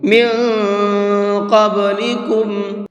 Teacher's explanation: مثل الذین خلوا، خا کو مبر کے پڑھیں گے، من قبلکم، یہاں پر نون ساکن کے بعد میں قاف ہے اور قاف بھی اخفا کے حرفوں میں سے ہے، تو یہاں نون کے اندر اخفا کریں گے، ناک میں آواز کو چھپا کر کے پڑھیں گے۔